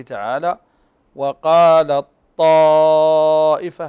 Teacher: فهنا ندغم التاء في الطاء طيب وذلك وذلك وذلك لتميز الطاء عن التاء باطباقها الم نذكر